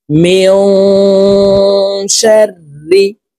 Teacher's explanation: এই নুন সাকিনকে নাকের ভিতরে লুকাইয়া গুনার সহিত পড়তে হবে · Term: ইকফা গুন্না